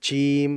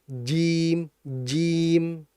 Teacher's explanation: Jadi hati-hati jangan cim tapi jim jim ya karena dia itu jahr bukan hames.